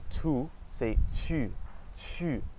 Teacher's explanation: It's the same as the English U, but your mouth is much more pursed. So think about if you ate a lemon, your mouth would be like, or if you were trying to whistle, it'd be.